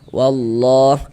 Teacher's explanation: Nah, sehingganya lafaz Allah dibaca panjang kayak gitu. Mad thobbi'i panjangnya dua harakat.